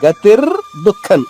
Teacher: ర పొల్లుగాను దు అనేది పూర్తిగా పలుకుతాం